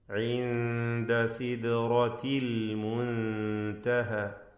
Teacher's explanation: ഈ വചനത്തിൽ റാഇന് മാത്രമാണ് തഫ്ഖീം നൽകേണ്ടത്